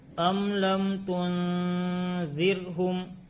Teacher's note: ام لم میں اظہار شفوی ہوگا، میم ساکن کے بعد 26 حرف میں سے لام آیا ہے اس لیے اظہار شفوی ہوگا، ملا کر میم کو ظاہر کر کے بغیر گنہ کے پڑھیں گے